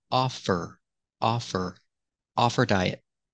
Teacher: the H is silent because her is not a stressed word silent h let's link The Sounds offer offer off her diet